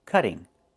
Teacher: Move the stress to the first syllable, cut.